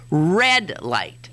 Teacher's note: they say the accent's on the adjective, red light, which makes some sense since the color is the important thing there.